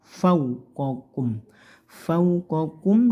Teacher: dibaca Fau tidak o tapi u